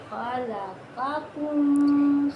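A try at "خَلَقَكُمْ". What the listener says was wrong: نقطے والے قاف کو موٹا پڑھنا ہے، قاکم۔ منہ کو گول کرنا ہے، خلقکم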